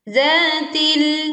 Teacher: Zatil, za dibaca panjang 2 harokat. Zatil, lam sukun, di sini kita menekan dan suara sebagian tertahan di ujung lidah